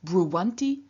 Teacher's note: And then in front of the ending anti, which begins with a vowel, the weak stem appears not as bru with a long u, but as bruv, so short u and w